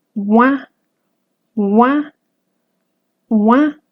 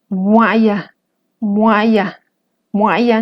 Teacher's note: si quisiera pronunciar una u pero que salga aire por mi nariz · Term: nasal